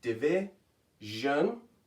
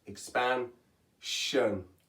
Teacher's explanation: it's making a jun sound, starting with the j that you hear in treasure